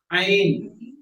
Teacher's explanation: आइन जब आप इसको अदा करेंगे तो आपके अंगूठे पे आपको वाइब्रेशन महसूस होगा